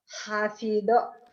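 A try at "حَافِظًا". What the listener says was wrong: Hafizo. Zo. Jangan hafido. Kalau hafido sod titik, ini zo titik. To titik, ini zo. Hafizo.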